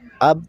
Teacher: با دونوں ہونٹوں کے تر حصہ سے ادا ہوتی ہے، یعنی مطلب دونوں ہونٹوں کا جو تر حصہ یہ جب ایک دوسرے سے مل جائے تو اس سے با ادا ہوتی ہے۔